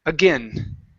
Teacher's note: instead of saying again with an A-E sound, it's a short I